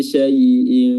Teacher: Tafasyi artinya tersebar, yaitu tersebarnya udara di permukaan lidah ketika melafazkan huruf shin. Dan makhrajnya adalah ujung tengah lidah diangkat bertemu dengan langit-langit.